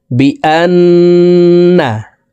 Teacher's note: নুনের সাথে নাকের বাশি থেকে তিন সেকেন্ড পরিমাণ গুন্নাহ করে ধরে রাখবো।